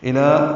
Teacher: الا لام کو 2 حرکات لمبا کرنا ہے، باریک پڑھیں گے